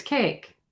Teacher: with standard British, it it does have a long a. It's just not quite as stretched out on the end as ours is.